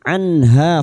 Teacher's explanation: Nun sukun dibaca jelas tanpa mendengung. Anha fathah diikuti alif dua harakat mad thabi'i. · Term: idhar halqi, idhar halki